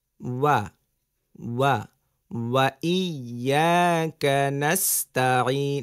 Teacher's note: ওয়াও বলার সময় ঠোঁট গোল হবে, ওয়া, ওয়া, ওয়া ইয়াকা নাস্তাঈন, নাস শব্দ থাকবে সিনে, হ্যাঁ, ওয়া ইয়াকা নাস্তাঈন, বলেন ওয়া ইয়াকা নাস্তাঈন।